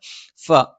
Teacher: മേലെ മുൻപല്ലിന്റെ താഴ്ഭാഗം താഴെ ചുണ്ടിന്റെ പള്ളയിൽ സ്പർശിക്കും